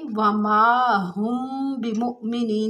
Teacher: میم ساکن اور اس کے بعد بائے تو وہاں پر اخفا ہوتا ہے ، یعنی وما ہم بمؤمنین، تھوڑی دیر آواز بند کریں گے